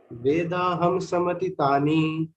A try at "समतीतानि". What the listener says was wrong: Samtitani. It is not rasva. It is dirgha. Samatitani. It is dirgha.